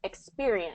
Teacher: it's really second syllable stress